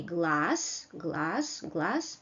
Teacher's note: z becomes s in final position, becomes voiceless